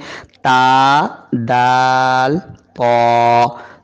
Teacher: जुबान की नोक ऊपर के दो दांतो की जड़ में है